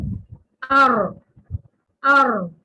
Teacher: اور اسی طرح رو زبان کی نوک کی پشت کو اوپر والے سامنے والے 4 دانتوں کے مسوڑوں سے لگا کر ار اس کو کرتے ہوئے رو میں تکرار بھی آواز آتی ہے